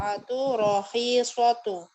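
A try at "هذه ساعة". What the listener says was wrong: sa'atun. Tanwin Bu. Hadihi sa'atun.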